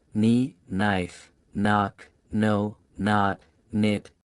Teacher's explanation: Kn is a consonant diraph where two letters together make a single sound. But in most cases the k is silent and only the n is pronounced. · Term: KN sound